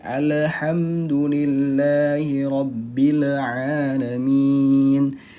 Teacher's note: Huruf lam bukan huruf qalqalah, jadi dia dibacanya tidak memantul. Apa yang dibaca memantul ketika sukun yaitu hanya huruf-huruf qalqalah, yaitu ada 5.